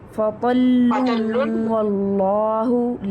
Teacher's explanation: نون کو واو میں مرج کر دیں گے. فَطَلٌّ وَاللَّهُ اس طرح کر کے.